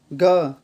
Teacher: ग, इसमें भी कम आवाज़ आ रही है, ये भी होता है अल्प प्राण